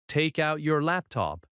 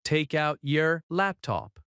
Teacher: The word your again reduces to year.